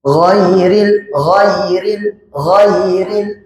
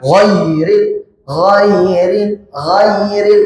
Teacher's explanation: Jangan dibaca panjang tapi dibaca pendek dan lem lembut. Huruf g memiliki sifat isti'ala atau naik. Maka jangan dibaca turun.